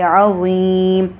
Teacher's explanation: یا مدہ ہے، اس کو ایک الف تک ہم لمبا کرتے ہوئے میم کے اوپر ہم ساکن کریں گے